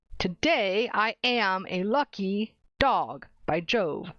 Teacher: Every other syllable is stressed. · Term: iambs